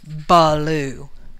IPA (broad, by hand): bəlu